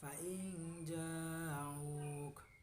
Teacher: huruf ikhfa, huruf nun mati dibaca samar-samar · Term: ikhfa hakiki